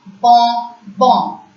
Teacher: O-N as a nasal sound is pronounced as on